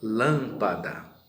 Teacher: então a sílaba mais forte é o lan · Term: sílaba tônica